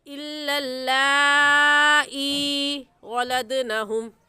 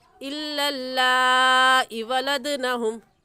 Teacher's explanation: या मद्दा को 1 अलिफ के बराबर खींचते हैं। अक्सर हजरात ये गलती कर जाते हैं, लाम पर तो मद करते हैं, हमज़ा या ज़ेर ई को नहीं खींचते।